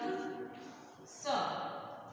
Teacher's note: जीभ दांतों से टच होगी, इसलिए ये दंत स है